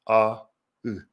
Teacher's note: they are both back, but they're both unrounded. As you can see, my lips are relaxed, a, u.